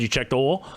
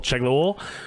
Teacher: There was no space in between check the and oil.